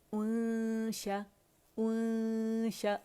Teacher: हमने गुन्ना रिटेन करना है, नून को छुपाना है और शीन के मखरज के करीब जाना है। जब 2 काउंट का कामला ग्रेड का इख्फा हो जाएगा फिर हमने शीन को फर्मली अदा करना है।